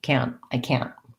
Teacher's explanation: you i can't explain so you won't hear that t but you will hear the clear vowel ah and a short stopped t